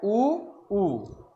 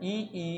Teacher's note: ऐसे स्वर जिसके उच्चारण में मुख लगभग बंद रहता है। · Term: संवृत स्वर